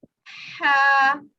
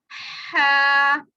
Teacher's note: ये निकलता है हलक के दरमियान वाले हिस्से से। ये साउंड आप देखें, यहाँ पे था हमारा जो सबसे निचले वाला हिस्सा, बॉटम ऑफ थॉट, और यहाँ पे दरमियान वाला हिस्सा।